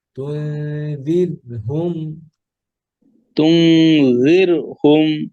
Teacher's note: লাম তুনযিরহুম কি হবে তুনযির র تنذر পাতলা জির না দিন কাসরার পরে র সুকুন আসছে র পাতলা